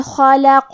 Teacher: کلمت خلقہ میں حرف الخاء کی ادائیگی حلق کے اوپر والے حصے سے ہے. خا حروف التفخیم میں سے ہے لہذا ہم یہ حرف کو بھاری آواز میں پڑھیں گے کیونکہ اس پہ اور لام پہ اور قاف پہ تینوں پہ زبر ہے لہذا ہمیں یہ تینوں زبر کو برابر سے ادا کرنا ہے.